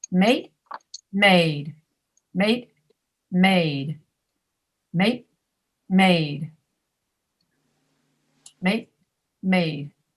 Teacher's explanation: The first one with the T is shorter than the second one with the D.